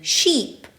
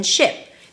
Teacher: the tense E as in sheep and the relaxed I as in ship